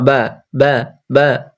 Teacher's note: দেখেন হয়ে গেল তারপর আসছে আমাদের 16 নাম্বার মাখরায় দুই ঠোঁট দুই ঠোঁটের ভিজে অংশ মিলিত হয়ে উচ্চারিত হয়